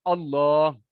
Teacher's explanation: یہ پر پڑھنا ہوتا ہے اللہ کے لام کو، جب اس سے پہلے زبر یا پیش آ جائے، اگر میں اللہ پڑھ دوں تو معنی نہیں بدلے گا، لیکن خوبصورتی کے اندر کمی آ جائے گی، ٹھیک ہے۔